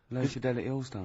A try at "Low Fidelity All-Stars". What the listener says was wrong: No, it's just you didn't open your mouth wide enough.